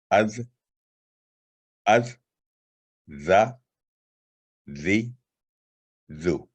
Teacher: یہ ترکیقی لیٹر ہے، یہ بھی باریک آواز والا لیٹر ہے، اور یہ زبان کی نوک کو معمولی سا باہر نکال کر اوپر والے دانتوں کے نچلے کنارے سے لگانے سے یہ حرف ادا ہوتا ہے، اور یہ بھی حروف لسانیہ یعنی زبان سے ادا ہوتا ہے. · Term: زال